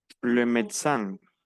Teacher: No pronunciamos la E del medio